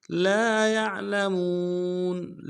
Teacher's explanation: لام کے ساتھ الف مدہ ہے، ایک مقدار میں کھینچیں گے، یا کو عین کے ساتھ ملانا، عین کو موٹا کریں گے ، اور لام کو نصب سے ادا کریں گے، میم کو · موٹا کریں گے، اور لام کو نصب سے ادا کریں گے، میم کو واو کے ساتھ ملانا، واو مدہ ایک مقدار میں کھینچیں گے